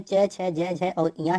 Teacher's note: तालव्य व्यंजन च, छ, ज, ज और ञ है